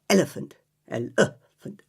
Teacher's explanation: It's the most common vowel sound in the English language, and it's called the schwa vowel.